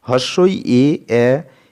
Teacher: জিহ্বার সামনের দিকে মুখের দাঁতের দিকে চলে আসছে, প্রসারিত হচ্ছে বলে একে প্রসারিত স্বরধ্বনি বলছি।